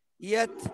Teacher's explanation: তায়ে সুকুন হালকা হামস হবে